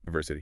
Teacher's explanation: it's actually more like a Y sound like in the word you